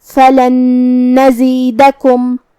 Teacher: پھر حرف النون ہے کلمت نزیدکم تو یہاں حکم ہوا ادغام. ہم پہلے نون کو دوسرے نون میں ملا کے ایک ہی نون لیکن تشدید کے ساتھ پڑھیں گے. فلن نزیدکم جو کہ حرف الدال پہ زبر ہے اور کاف پہ پیش ہے تو یہ سب حرکات کا دھیان رہے.